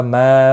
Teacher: ما مد منفصل ہے تین الف کے برابر کھینچ کر پڑھیں گے